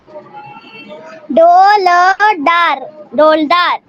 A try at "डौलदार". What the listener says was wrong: डोलदार नहीं, ये डौलदार। ये डऊ है ना। अगर डो होता तो इस तरह से होता, कैसे?